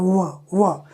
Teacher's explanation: व दांत ऊपर का और नीचे का होठ, इन दोनों से बोला जाता है व। इसमें भी आप देखिए वायु पूरी तरह से अवरुद्ध नहीं है।